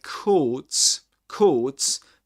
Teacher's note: This is a long o sound in British English which is represented with this symbol.